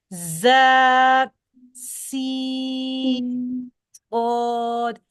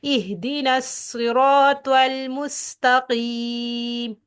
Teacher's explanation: ان کے اندر سیٹی کی آواز کا آنا ضروری ہے اور یہ اس کا ایک صفت لازمی ہے.